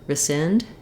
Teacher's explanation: You may hear people say rescind as well with the E sound, but the important thing here is that the sind is long and this first syllable is going to be quite short.